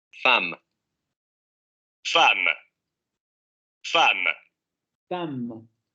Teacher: anterior abierta no labializada